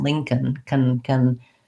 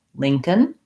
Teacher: can a little bit of a schwa in there maybe but going right from the k to the n as much as possible